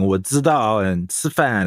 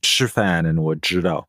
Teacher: strong Zhejiang accent where the, zi, zhi, si, shi, these sounds are often not differentiated, or at least not very consistently